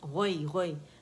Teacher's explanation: غوئی کی آواز غو موٹا ہی ہوگا اور جو غوئی لین ہے وہ نرمی سے ادا ہوگا